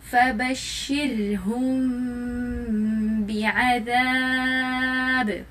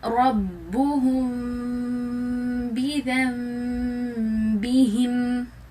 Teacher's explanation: غنہ کیا ہم نے, لپس کو سلائٹلی ٹچ کیا · سمپلی ہونٹوں کو سلائٹلی ٹچ کریں گے, پریس نہیں کریں گے زور سے, اور غنہ کریں گے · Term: اخفاء شفوی